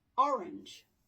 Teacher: And then we have orange. And here the stress is on the first syllable